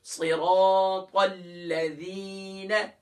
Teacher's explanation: زی نہیں ہے یہاں ذال ہے، سافٹ کریں گے